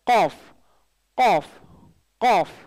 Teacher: காஃப் இது வந்து உள் தொண்டையிலேருந்து வரும், சாரி உள் நாக்கிலிருந்து வரும். காஃப் இது வந்து டங் லெட்டர் தான், உள் நாக்கு. காஃப் காஃப் உயர்த்தி சொல்லணும், காஃப் வாய் திறந்து காஃப் காஃப் QAAF மாதிரி காஃப் காஃப் காஃப்.